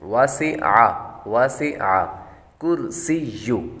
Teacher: وسع واو کے بعد سین حروف صفیریہ میں سے یعنی سیٹی والے حروف میں سے ہے تو سیٹی کی آواز نکالیں گے